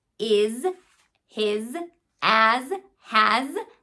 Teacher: the sound before the S is a voice box on sound I leave my voice box on to represent the z sound when I see that letter s